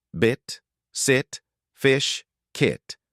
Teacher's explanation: Lips completely neutral. No tension, no stretching. The tongue is high in the mouth but not tightly raised. This sound is very short and relaxed.